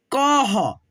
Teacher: दो विसर्ग को ह के रूप में उच्चारण करते हैं, तो इसको पढ़ेंगे क के साथ ह का साउंड निकालेंगे, कह, क्या पढ़ेंगे, कह।